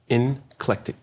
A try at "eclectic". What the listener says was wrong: There's no N in it.